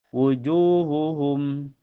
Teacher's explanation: Cara bacanya ditahan sampai terasa ke hidung. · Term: idgam mimi